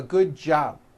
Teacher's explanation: you see that you did not hear the b sound